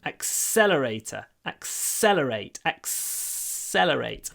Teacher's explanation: Remember pronunciation, accelerator, the stress is on the second syllable, so what do? We make the S really long.